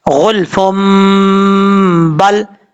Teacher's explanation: فا کو با کے ساتھ ملا کے پڑھیں گے اور ایک الف کی مقدار غنہ کریں گے